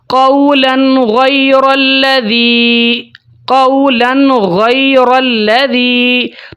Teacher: ایک اور مثال دیتا ہوں، یہاں پہ دیکھیں وَلَمُ قَوْلًا، قَوْلًا لام کے اوپر جو ہے وہ تنوین ہے، تنوین کے بعد حروف ہلکی میں سے غائن آ گئی ہے، تو یہاں پر بھی ہم غنہ نہیں کریں گے، اخفا نہیں کریں گے، تبدیلی کے بغیر تنوین کی اصل آواز کو ہم ظاہر کر کے پڑھیں گے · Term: اظہار